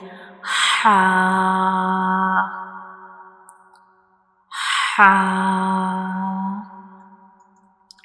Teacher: it is pronounced from the middle of the throat. And when we read ha, the sound spills out like ha. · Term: throat letter